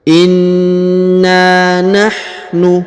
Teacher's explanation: huruf na ditahan dan ditekan lalu dipanjangkan 2 harokat ya karena terdapat alif di depannya.